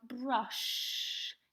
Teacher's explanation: it's got that soft hissing sound at the end of the word